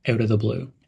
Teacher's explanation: link the words out and of they sound like outa out of the blue and emphasize blue out of the blue